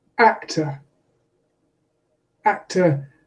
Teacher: actor has stress on the first syllable the second syllable is unstressed in its in might in my accent is simply a schwa